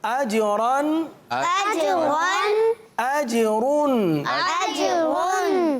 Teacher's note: प्यारे बच्चों, अजरन आखिर में 2 ज़बर की तनवीन, अजरुन आखिर में 2 पेश की तनवीन। तो रा पर 2 ज़बर या 2 पेश की तनवीन हो तो रा को पुर पढ़ते हैं